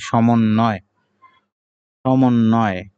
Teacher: নয়ের সাথে ব ফলা রয়েছে, এইজন্য ন ২ বার হবে।